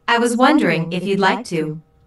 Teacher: John is nervous and does not want to appear too direct or bold. Notice how the question goes up at the end, which shows that he is not overly confident.